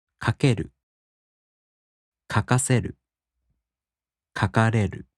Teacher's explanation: In the downstep-type verbs, the accent falls on the mora before る. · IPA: [kakeꜜru] [kakaseꜜru] [kakareꜜru]